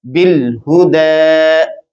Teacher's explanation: اور دال کے اوپر کھڑی زبر آ گئی ہے، آگے پھر یا خالی ہے، جیسے یہاں پر واو خالی تھی، ٹھیک ہے، یہاں پر بھی یا خالی ہے، پڑھنے میں نہیں آئے گی اور دال کو کھڑی زبر میں پڑھیں گے، اس کو الف المقصورہ کہا جاتا ہے.